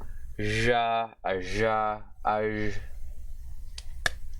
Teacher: Voiced, palatoalveolar, sibilant fricative consonant. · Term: edge